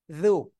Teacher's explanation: জু জিব্বার আগায় দুই দাঁতের আগায় লাগাবেন